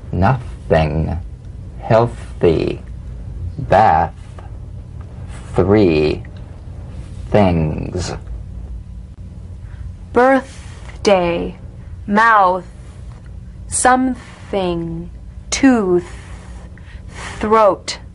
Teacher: The unvoiced tongue point to teeth fricative consonant. Play this dry, gentle, whispered lightly and softly without the slightest pressure. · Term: voiceless TH